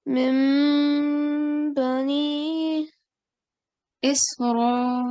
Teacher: And we learned this other rule just today, that when we have to do iqlab, when we change the sound of noon sakin into mim, we also have to do 2-second nasal sound